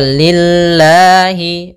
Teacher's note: lamnya tipis Yaitu lafz didahului dengan huruf kasrah maka tipis